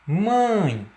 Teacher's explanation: O próprio tio aí, sobre sobre a vogal A, ele indica a nasalização dessa pronúncia, tá? Quando eu digo mãe, você vai pronunciar, o ar vai sair tanto pela boca quanto pelo nariz · Ditongo nasal. O ditongo nasal, ele tem por principal característica a emissão de ar durante a pronúncia, sendo feita tanto pela boca quanto pelas fossas nasais